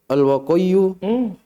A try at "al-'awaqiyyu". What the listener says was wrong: Lihat baik-baik, ada huruf sebelum waw. Al-awaqi.